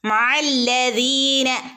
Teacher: യാ മദ്ദുണ്ട്, രണ്ടനക്കം നീട്ടിക്കൊടുക്കുക.